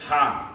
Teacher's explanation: हा का मकरज है हलक के दरमियानी हिस्सा